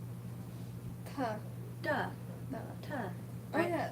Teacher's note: the tip of your tongue is only touching the roof of your mouth. No teeth at all.